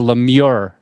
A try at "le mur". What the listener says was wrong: There's no R. It's le. L-E is le in French, which means the, and mur